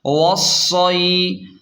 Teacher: حمزہ زیر ای، رحلۃ الشتاء، واو صاد زبر وص، صاد یا زبر صی، وصی، واو کو صاد کے ساتھ ڈائریکٹ ملائیں گے اور شد بھی ہے، سختی سے پڑھیں گے۔ وصی، اور یا لین کو جلدی اور نرمی کے ساتھ پڑھیں گے۔